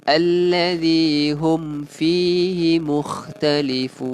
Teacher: mim mati bertemu dengan huruf fa, hukumnya adalah izhar syafawi. Okey, so kita baca ni jelas.